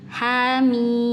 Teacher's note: mim langsung begitu Jadi cara bacanya ini ini tidak idgam ya hannya dua harakat mimnya 6 harakat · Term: mad tabi'i